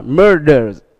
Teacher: vì thế S này được phát âm thành z. Cho nên chúng ta đọc là murders.